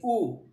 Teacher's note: ऊ में देखिए ओष्ठ की आकृति गोलाकार हो रही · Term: वृत्तमुखी